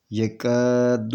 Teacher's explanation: یہ یکاد البرق، یہ الف ہے، الف سے پہلے زبر ہے، تو یہ الف مدیہ ہے، تو اس کو دو حرکت کے برابر کھینچ کر پڑھیں گے۔ یکاد، یہ الف نہیں پڑھا جائے گا، یہ دال لام کے ساتھ ملا کر پڑھیں گے۔